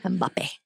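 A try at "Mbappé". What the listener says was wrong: The M is not silent. It's not silent. No, you lean into it. Mbappe. Mbappe. Luxuriate in the M.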